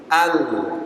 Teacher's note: lam keluar dari ujung tepi lidah bertemu langit-langit